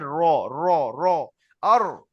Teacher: তালুতে লাগছে তাহলে র টা পুর হয়ে র উচ্চারণ হয়ে যাবে জীবের আগার উল্টো পিঠ তার বরাবর উপরের তালুর সাথে লেগে উচ্চারণ হয়